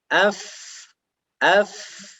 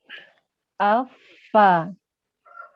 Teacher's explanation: Bukan di dua bibir, tapi perut bibir bawah yang dalam dengan ujung gigi seri yang atas. Jadi bibir dengan gigi, bukan dua bibir. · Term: huruf fa